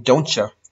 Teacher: a lot of times the t will become a ch sound like in don'tcha